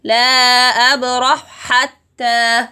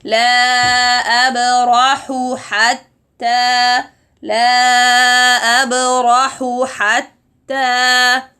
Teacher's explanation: The mistake that may happen here is merging the two ha to be one ha.